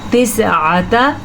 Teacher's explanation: आइन जो है हलक से निकालना है